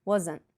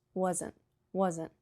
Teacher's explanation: Wasn't, 2 syllables. The T at the end sometimes is very soft. You can hardly hear it. Wasn't. You just tap your tongue, but sometimes the T doesn't even come out.